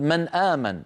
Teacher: إذا جاء بعد النون همزة يظهرون النون